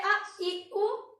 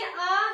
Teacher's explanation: ह्रस्व में क्या आता है, अ, इ, उ, यानी कि इसको बोलने में हमें कम समय लगता है और दीर्घ को बोलने में अधिक समय लगता है